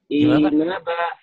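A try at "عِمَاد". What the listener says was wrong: Kok panjang? Enggak ada yang panjang.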